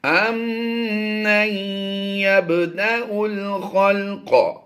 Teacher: یہ با ساکن حروف کلکلہ سے ہے، تو یہاں پر ہم نے کلکلہ کرنا ہے